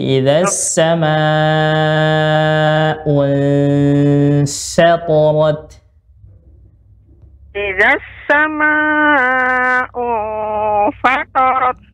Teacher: Fa-nya tidak boleh tebal. Ya, ta-nya boleh tebal, ra-nya boleh tebal, tapi fa tidak boleh